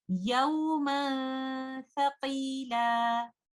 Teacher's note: We will hide the noon sakina by not touching the tip of the tongue with the roof of the mouth. We will only give the ghunnah. We will hold the ghunnah for some time and recite it like this. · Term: ikhfa